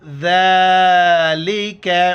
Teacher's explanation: ذال کے وقت زبان باہر نکالنا ہے اور اس کے اوپر کڑا زبر ہے، ایک الف مقدار اوپر کھینچنا ہے.